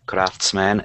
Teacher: Craftsmen, two syllables, and the first one is the stressed.